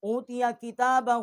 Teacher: ہا کے اوپر الٹا پیش ہے. 1 الف جتنا اس کی آواز جو ہے وہ ہم نے بلند کی ہے